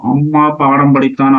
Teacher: அம்மா, பாடம் படித்தான் ஆகிய சொற்களில் மகர மெய்யெழுத்து தனக்குரிய 1/2 மாத்திரை அளவில் ஒலிக்கிறது